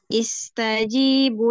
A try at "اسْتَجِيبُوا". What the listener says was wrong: Bu Afwan, bunya juga dua harokat ya. Istajibu.